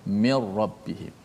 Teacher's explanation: Tak boleh kita baca min, tak ada dengung nun, tak boleh. Terus masukkan nun dalam ra. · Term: idgham